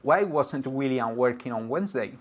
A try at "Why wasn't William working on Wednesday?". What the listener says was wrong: Excellent. One more time.